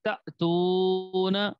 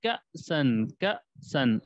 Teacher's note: حمزہ ساکنہ کو جھٹکے کے ساتھ پڑھیں گے